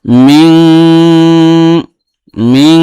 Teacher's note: এই নুন সাকিনের উচ্চারণটাকে নাকের ভিতরে নিয়ে গুনগুন করে একালিফ গুণনা করে আদায় করা, এটাকে ইখফা বলে